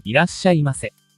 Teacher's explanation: Geminated or doubled consonant sound, ito ang pagpapahaba ng isang katinig o consonant sa pamamagitan ng pagsusulat nito ng 2 beses. · Mapapansin natin na nadoble ang S. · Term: Sokuon, geminated sound